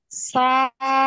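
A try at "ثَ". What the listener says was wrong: সা না, থা। থা। থা। আবার সা সার উচ্চারণ কোন জায়গায়, সার মাখরাজ কোথায়? জিব্বার আগা। সামনের উপরে দুই দাঁতের আগা। আগা আগা। নরম হবে।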